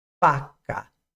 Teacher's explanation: que é o posicionamento é um posicionamento lábio dental Ou seja a arcada superior ela encosta sobre o lábio inferior